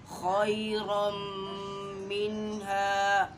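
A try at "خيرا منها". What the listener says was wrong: खैरम मिन्हा, खई कोशिश करें कि यहाँ होंठ गोल ना हो, खोई गलत है।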